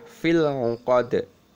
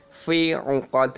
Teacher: Lamnya sukun itu dibaca jelas. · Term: al-qomariyah